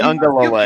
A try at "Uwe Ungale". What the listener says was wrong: can't say Ungale with an N sound. There's no N in it.